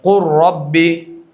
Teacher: لام اور را دیکھیے، نوک زبان تالو سے مل کر ہے، پشت زبان تالو سے مل کر ہے، لام را بہت قریب ہے مخرج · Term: ادغام متقارب